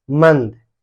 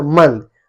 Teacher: तो इसका प्रयोग हम लोग वर्णों के ऊपर करते हैं, इसको उच्चारण जब करते हैं ना तो नाक से हमें ध्वनि आती है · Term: अनुस्वार